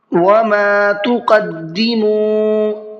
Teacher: میم کو کھینچ کر کے پڑھنا ہے، اس لیے کہ یہاں پر الف مدہ کا قاعدہ ہے